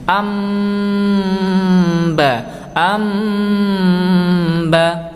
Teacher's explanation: Ada nun sukun bertemu ba. Cara membaca iqlab adalah mengganti bunyi nun sukunnya dengan mim sukun dengan disertai dengung